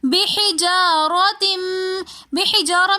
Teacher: بحجارہ میں را کے اوپر زبر ہونے کی وجہ سے ہم نے را کو موٹا کر کے پڑھا